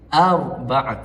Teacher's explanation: Ah syarat untuk ra itu dibaca dengan tebal antaranya adalah sebelum ra mati adanya baris atas. Maka ra mati ini dibaca dengan tebal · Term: ra tafkhim